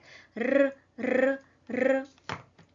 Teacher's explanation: The tip of the tongue touches the alveolar zone, and the sound is produced through a mild vibration like r, r, r.